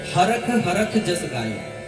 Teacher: और कहीं कहीं पर वो जो श है उसका उच्चारण ख होता है।